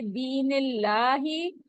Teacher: लाम जलाला से पहले जेर है तो इसको हमने मोटा नहीं पढ़ना बारीक पढ़ेंगे